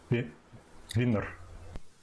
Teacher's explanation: I was trying to give a little bit more of a bilabial V